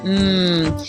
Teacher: a nasal hmm where both lips come together and we go hmm